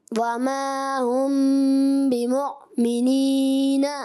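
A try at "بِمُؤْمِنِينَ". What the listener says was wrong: اچھا آپ جو ہے نا وما ہم بمو مو مو آ رہا ہے، منہ آنا چاہیے، منہ. اگر آپ مو کریں گے نا مجہول ہو جائے گا. آپ نے کرنا منہ. وما ہم بمؤمنین.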